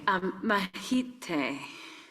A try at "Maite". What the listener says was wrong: Maite. So, the H is that you don't pronounce the H. It's just like in Mexico. Maite.